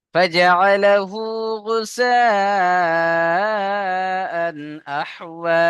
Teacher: আহওয়া فجعله غثاء أحوى গুসা, এখানে একটু বেশি টান দেবেন। হরফে মাদের পরে হামজা এসে একই শব্দে মাদ্দে মুত্তাসিল, মাদ্দে মুত্তাসিলকে 2 থেকে 3 আলিফ টান দিয়ে পড়তে হয়।